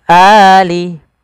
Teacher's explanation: Mad badal terjadi apabila ada huruf hamzah, baik itu fathatain, kasrah, fathah, dhamma atau kasrah, bertemu dengan huruf mad, alif, waw atau ya. Maka dia kita namakan dengan mad badal, panjangnya sama dengan mad tabi'i, yaitu 2 harokat.